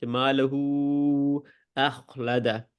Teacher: مالہ 4 گنا لمبا کیا اس کو کیونکہ آگے الف تھا